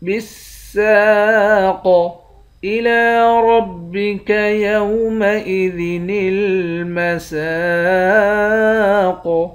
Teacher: لام کے اوپر کھڑا زبر ہے، کھڑے زبر کو 1 الف کی مقدار کھینچ کر پڑھتے ہیں۔ را کو موٹا پڑھیں گے، اس چھوٹے والے نون کو لام کے ساتھ ملا کر پڑھیں گے۔